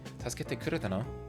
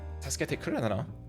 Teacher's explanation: And then no is just a, like, it's rising intonation.